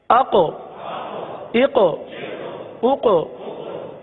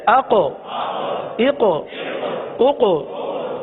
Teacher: قاف کو پر بھی پڑھا اور اس میں قلقلہ بھی ادا ہوا ہے